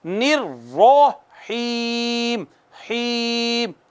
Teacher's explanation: نون کو را کے اوپر زور سے مارنا ہے چونکہ یہ مشدد ہے اور زبر ہے تو موٹی بھی پڑھنی ہے۔ نررحیم، حیم، ایک الف جتنا، ایک ہم نے یہاں پہ ایک الف جتنا کھینچا اس کو، پھر کھڑی زبر کو ایک الف جتنا کھینچا، اور پھر ہم نے یا کے اوپر ایک الف جتنا کھینچا ہے، اور ہم نے پڑھا ہے بسم اللہ الرحمن الرحیم۔